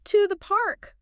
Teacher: The target there was to the park with that rising intonation.